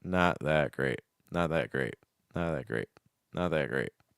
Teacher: you're not releasing on that t t so you don't get that strong T sound · So just because you're using a held T does not mean that you're going to stop the breath completely. It's just more you're not releasing on that t, so you don't get that strong T sound.